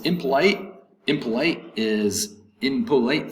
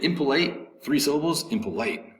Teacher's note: third syllable has the accent